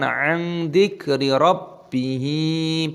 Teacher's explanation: nun sukun bertemu dengan dzal dibaca ikhfa, disamarkan · Ba-nya berharokat tasdid maka ditekan